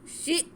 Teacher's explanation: شین کو ہم حمزہ سے ملائیں گے اور حمزہ کو تھوڑا سا جھٹکا دیں گے کیونکہ حمزہ ساکن ہے